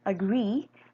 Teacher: the lexical stress is placed on the heavy syllable in the ultimate position in this word agree the syllable in the ultimate position this